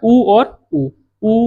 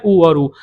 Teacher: ऊ और ऊ करोगे तो ओष्ठ आपके मुड़ते हैं